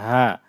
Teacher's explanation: হলো হা গলার মধ্যভাগ থেকে চাপ দিয়ে উচ্চারণ হবে হা আর এটা স্বাভাবিক হা মুখের খালি জায়গা থেকে